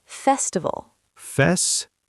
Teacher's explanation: Stress the first syllable.